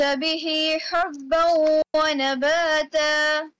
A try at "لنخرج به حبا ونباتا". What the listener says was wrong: Yeah, this ha should be softer. This one should be sharper. Now both of the ha's are coming together or coming closer. So we have to be careful. We have to distinguish between the sounds of these two. لنخرج به حبا ونباتا.